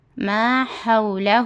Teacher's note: یہ ہا جب ہم حلق کو 3 حصے کریں گے تو درمیانی حصے سے ہا ادا ہوتا